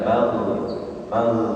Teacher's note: gain sukun dia mengalir suaranya mag mag ya mag suaranya nafasnya tertahan mag mag seperti kalau